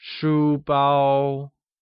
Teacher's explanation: uses high level tones on both u and a and is pronounced as shūbāo